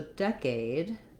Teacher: and um the diphthong a with a clear vowel so decade i do want to have the dec syllable long and the aid syllable shorter decade but i have the stress but i still have a · when we go to decade we also have first syllable stress